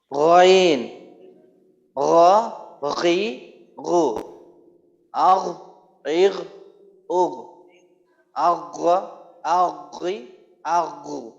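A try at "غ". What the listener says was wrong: আচ্ছা আওয়াজ চালু থাকার ক্ষেত্রে কিছু কিছু জায়গায় চালু থাকে, কখনো কখনো দেখা যায় আবার বন্ধ হয়ে যায়, দুই একটা আওয়াজ ক্ষেত্রে বন্ধ হইলো, দুই একটা ক্ষেত্রে চালু থাকলো।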